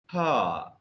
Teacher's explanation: the glottis is open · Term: glottal fricatives